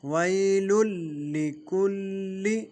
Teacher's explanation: وی کی یا جو ہے یہ یا لین ہے، اس کو کھینچیں گے نہیں۔